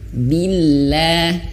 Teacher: lafaz Allah di sini tidak tebal ya, karena sebelum lafaz Allah ini ada huruf ba yang berharokat kasroh. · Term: tipis